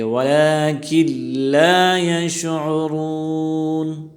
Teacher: اس کو کھینچ کر پڑھیں گے ایک الف کی مقدار، اور را یہاں موٹی پڑھی جائے گی، پر پڑھی جائے گی اس لیے کہ را پر پیش آیا ہے ، اور نون کے زبر کو ساکن پڑھیں گے، وَلَكِن لَا